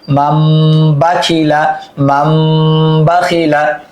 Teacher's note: মিম নুন জবর মাম, মান হওয়ার কথা কিন্তু নুন সাকিনের পর বা আসছে ইকলাব হরফ, এই জন্য হবে মাম, মিম দ্বারা পরিবর্তন করতে হবে।